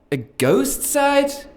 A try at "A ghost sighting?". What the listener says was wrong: Yeah, try again. You said ghost sight, it's ghost sighting.